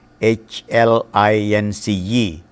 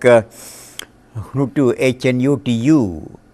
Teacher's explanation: Initial consonants in these words are dropped, notably H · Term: H is dropped